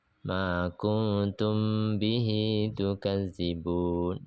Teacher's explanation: Mim mati bertemu dengan ba, samar-samar dengan dengung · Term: ikhfa syafawi